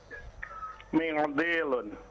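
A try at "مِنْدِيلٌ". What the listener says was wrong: Tidak usah diikhfa. Mendilun biasa saja.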